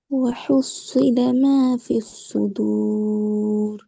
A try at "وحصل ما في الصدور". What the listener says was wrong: அந்த ரா வல்லினமா மெல்லினமா ரெண்டுமே இல்லாம உச்சரிக்கிறீங்க இப்ப. ராக்கு முன்னுக்குள்ளது சுக்கூன் இருந்தா அந்த ரா மெல்லினமா உச்சரிக்கணும்ன்றா சொன்னோம்.